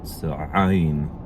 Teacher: they call it a pharyngeal fricative